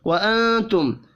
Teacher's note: میم ساکن کے بعد تا ہے، اظہار شفی ہوگا، غنہ نہیں ہوگا